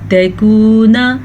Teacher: نون تنوین کی آواز کو چھپا کے پڑھیں گے لیکن غنّے کے ساتھ پڑھیں گے۔ جیسا کہ ہم نے یہاں پہ چھپایا غنّہ کیا تکونا، اصل میں یہاں پہ رک جانے کو ہی غنّہ کہتے ہیں، یہ چھپا ہوا غنّہ ہے، ٹھیک ہے۔